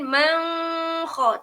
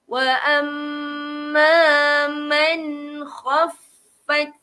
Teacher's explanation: dekat sini tuan-tuan dan perempuan tak boleh dengung. Sebab di sini jadi hukum dia izhar. Sebab dia berjumpa dengan huruf kha.